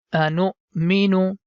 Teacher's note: Whenever you see letter Hamza is written top of Waw, that time Waw becomes silent, and the Nu sound is going to connect with Hamza